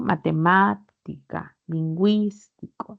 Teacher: Las esdrújulas tienen la mayor fuerza de voz en la antepenúltima